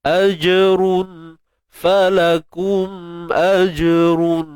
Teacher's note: jim sukun ni qalqalah sughra